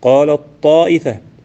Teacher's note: وتاء التانيث تدغم في حرفين بلا خلاف، وهما الطاء والدال. وقد مثل رحمه الله لإدغامها في الطاء بقوله تعالى: قال الطائفة.